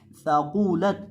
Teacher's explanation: ज़ुबान की नोक जब सामने वाले ऊपर के 2 दांतों के किनारे से लगती है तो सा अदा होता है। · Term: मोटा